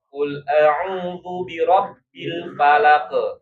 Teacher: dia qalqalahnya harus dibaca tebal bapak-bapak